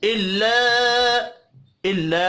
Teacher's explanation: इल्ला अलिफ मद्दा है, इसको एक अलिफ के बराबर खींच कर पढ़ेंगे।